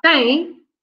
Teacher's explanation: the M is there to give us a nasal E, right? The M is at the end, just to give us a nasal sound.